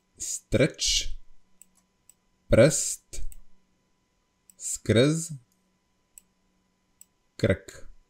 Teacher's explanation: there is a schwa sound in the words, yeah, but it's not written here